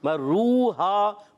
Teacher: واو مدہ بھی ہے الف مدہ بھی ہے، ان کو ایک ایک الف کھینچ کر ادا کریں گے۔